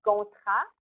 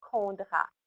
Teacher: So I said gontra, and the child wrote condra. So the g sound he hears as a k sound, and the t sound he hears as a d sound. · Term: voicing errors